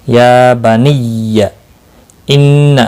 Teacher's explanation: ان نون مشدد پر غنہ ہوگا، اللہ کا لام زبر کی وجہ سے موٹا پڑا جائے گا، اس کے اوپر کھڑی زبر بھی ہے، ایک الف کے برابر کھینچ کر پڑھیں گے۔